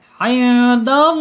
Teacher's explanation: Sehingga harus dibaca tafkhim tebal ya. Harus dibaca tebal lam jalalahnya. Alallah penekanan di lam karena ada tasdid di sini ya.